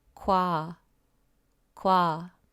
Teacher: Remember, kiok is responsible for the GK sound, and this vowel is made up of O and A, which became wa. Again, as a beginner, you might make yourself separate the sounds and say go wa, but just let them flow. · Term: compound vowels